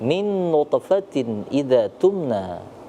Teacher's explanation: ada nun mati bertemu dengan nun. Nun bertemu dengan nun. Nah, itu dibaca dengung karena hukum bacanya adalah idgham bi gunnah, dibaca dengung ya.